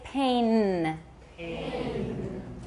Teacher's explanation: N is an alveolar sound. The tip of your tongue is touching your alveolar ridge.